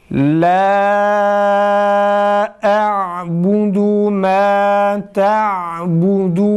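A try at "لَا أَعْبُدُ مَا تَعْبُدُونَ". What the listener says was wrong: dudak hiç hareket etmiyor maalesef. Dikkat ediyoruz tekrar. Dudak önde ötrelerde, dammelerde tekrar.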